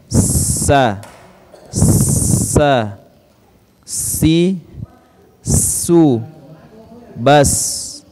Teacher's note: Sifat yang terdapat di dalam huruf sa ada sifat ya, berdesis seperti suara belalang